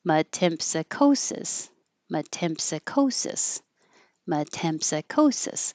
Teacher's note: You'll notice the vowel tem because it's longer and easier to hear, but it won't be higher.